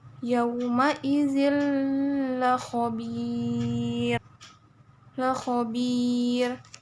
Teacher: Karena ada tanwin, karena ada tanwin kasroh bertemu dengan huruf la. Jadi bacanya itu langsung dimasukkan ke huruf la. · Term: idgham bila gunah